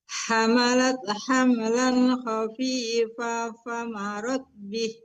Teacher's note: Khafifan itu dengungkan, nun ketemu fa, dengungkan Bu.